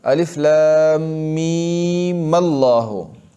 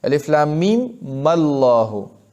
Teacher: وی الله لا اله الا شروع کا دویمه طریقه سره چې د میم له حرکت ورکا او لفظ الله سره ملاو کا څنګه الف لام میم الله لکه څنګه چې ادغام دی کو